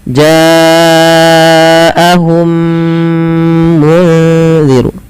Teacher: Maka langkahnya adalah memasukkan mim pertama kepada mim kedua dan ditahan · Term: idgham mimi